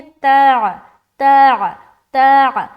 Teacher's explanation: بعض اوقات لوگ یہاں پر پڑھتے تا تدوہا، تو انہوں نے کیا غلطی کی، عین کو حذف کر دیا